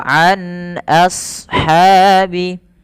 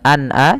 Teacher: An ainnya jelaskan jangan an a, jangan dibaca dengan hamzah tapi ain